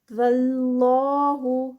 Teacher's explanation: اللہ کے نام سے پہلے زبر آ رہی ہے تو اللہ کا نام بھی ہیوی پروناؤنس ہوگا